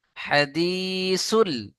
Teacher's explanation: হা টান হবে না হা এর উপরে জবার হারাকাত